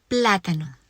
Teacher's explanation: The word plátano ends in a vowel, but it doesn't follow rule number 1 because the stress falls on the first syllable, and it should fall on the next to the last syllable.